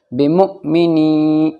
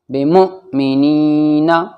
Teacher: یا ساکن سے پہلے نون کے نیچے زیر ہے اس لیے یا مد ہوگا یعنی یا کھنچ کر پڑھا جائے گا